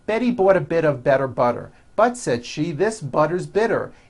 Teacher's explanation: notice that you do not hear any T sounds